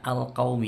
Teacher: alif lamnya qamariyah karena lamnya sukun terbaca jelas.